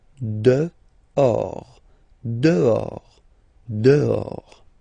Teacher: Okay, so remember final S not pronounced, and then this H in French doesn't exist phonetically, so you don't pronounce it.